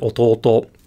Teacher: in Japanese like with the word Alto Alto the accent comes at the end of the word